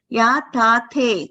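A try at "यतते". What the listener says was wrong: No, there is Mahaprana. It has to be controlled. So second takara you're giving a stress. Same effort for both the takaras.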